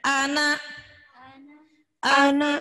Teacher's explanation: Jangan A-nya yang panjang, N-nya yang ditekan.